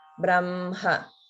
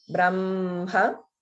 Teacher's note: In the word Brahma, notice this is one of the words that, even though it's written as HM, we pronounce it as MH